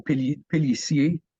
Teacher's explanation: the ER at the end of a word in French is pronounced A.